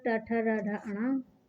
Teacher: इसका उच्चारण स्थान है मूर्धा, मुंह के भीतर की, और इसका वर्ण नाम है मूर्धन्य